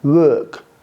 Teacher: ее вы произносите как бы тоже длинную У, но как-то между У и О. И как бы губы вытягиваете, и у вас получается вот так получается.